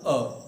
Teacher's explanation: आप याद रखने का तरीका कैसे स्वरों को रखा जाए, यहाँ पर ए रखें मध्य में, यानी कि ए, देखिए अब महसूस करें, जब मैं ए बोलूँगा अ, तो मेरी जीभ बिल्कुल स्टेबल है, मध्य में है, ना तो पीछे से ना आगे को निकली